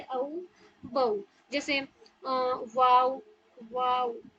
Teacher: हमारी होठ की आर्टिकुलेशंस पूरी सर्कुलर शेप की बनती है, तब जाके वाव की अदायगी होती है। जैसे औ, बऊ, जैसे वाव, वाव।